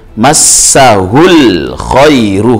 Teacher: khai ini mad layyin karena ya sukun didahului harokat fathah